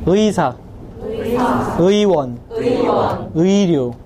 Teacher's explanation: 의가 첫 음절로 들어갈 때는 의로 정확하게 발음이 돼요.